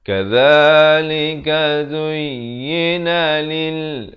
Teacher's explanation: Lam bari kasrah bunyi li, bukan bunyi le.